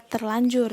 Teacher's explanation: terjadi perubahan fonem dimana fonem er berubah menjadi l